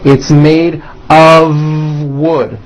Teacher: It's not a wood with an unvoiced F. It's all voiced and it's all connected.